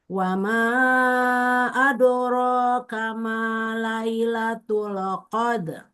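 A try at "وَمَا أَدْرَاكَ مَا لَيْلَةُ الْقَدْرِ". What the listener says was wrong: Wa ma adra bukan adoro, enggak adoro, enggak adra, adra, adra. Wa ma adra. baca itu jadi qalqalahnya kubro, bukan sugro. Karena pantulannya terlalu besar. Wa ma adro, adro itu terlalu besar.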